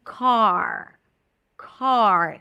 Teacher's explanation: So you got to round the lips. When the R is at the end, car, car. The jaw is a bit more open. Lips are slightly rounded, not as much.